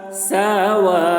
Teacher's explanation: वाव में खड़ा ज़बर है, वाव को खींचेंगे, या को नहीं पढ़ेंगे